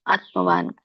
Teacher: ಆತ್ಮವಾನ್ ನ ವ್ಯಂಜನ ಇರೋದ್ರಿಂದ ಅಲ್ಪವಾಗಿ ನಾವು ನ ಉಚ್ಚರಿಸಬೇಕು